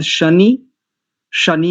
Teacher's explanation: शनि में तालव्य सकार